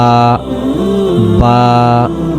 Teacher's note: দুই ঠোটে লাগবে বা